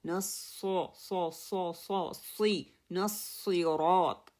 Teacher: سین light ہے، اس میں میری زبان بالکل ریلیکس رہتی ہے، اور صاد جو ہے وہ ہیوی لیٹر ہے، اس میں میری زبان کا پچھلا حصہ اور میری زبان کا مڈل والا حصہ اوپر اٹھتا ہے، جس کی وجہ سے صاد جو ہے پرناؤنس ہوتا ہے.